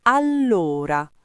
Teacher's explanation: con la doppia L marcata, la O aperta e l'accento sulla prima sillaba. Ma nella parlata veloce spesso diventa allora, unito, quasi allora, con un accento mobile.